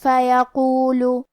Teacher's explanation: کلمت فیقول میں حرف القاف کی ادائیگی زبان کے جڑ اور تالو کے نرم حصے سے ہے. قاف حروف تفخیم میں سے بھی ہے، تو ہم یہ حرف کو موٹی آواز میں پڑھیں گے. آخری میں حرف اللام پہ پیش ہے، تو ہمیں پیش کو ظاہر کرنا ہے.